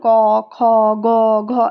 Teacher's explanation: এই যে ক যখন উচ্চারণ করছি আমরা ক এর ভেতরে কি হচ্ছে আমরা একটা অ বের হচ্ছে তাইতো এইগুলো হচ্ছে উচ্চারণে সাহায্য করে বোঝা গেল ক খ গ